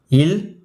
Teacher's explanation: மேல்வாயை நாக்கின் ஓரங்கள் தடித்து தடவுவதால் பிறக்கும் மெய்யெழுத்துக்கள்